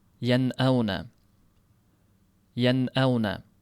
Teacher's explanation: Sezgan bo'lsangiz, nun bilintirildi, hamza ham aniq bilintirilib o'tib ketilindi. Yan'auna yoki bo'lsam yan'auna deb ushlab qolinmaydi. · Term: izhor